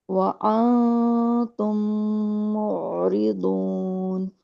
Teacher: میم کا میم کے ساتھ بھی ادغام